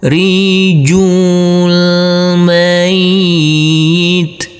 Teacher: Huruf ya cukup kita tekan dan kita tahan saja dengan dua harakat. Huruf nun kita baca pendek langsung masuk ke huruf lam yang bersukun.